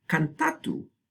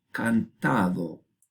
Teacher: Tenemos un ejemplo aquí en la t intervocálica, entre vocales, del latín, que cambia a da en castellano, como parte de un proceso más general llamado lenición.